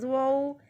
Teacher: زوا کو نرمی سے پڑھنا ہے تاکہ زواد کے ساتھ زیادہ مشابہت نہ ہو اس کی